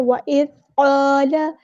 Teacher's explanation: الف مدہ، یہاں پہ اس کو ایک الف کے برابر لمبا کرنا ہے اور اس کو موٹا ادا کرنا ہے